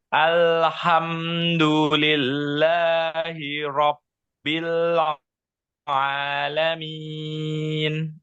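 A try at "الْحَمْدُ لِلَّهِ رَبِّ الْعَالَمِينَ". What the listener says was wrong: Ya, lamnya sedikit mantul. Al, ada la, sedikit tapi. Alhamdulillahi Rabbil Alamin.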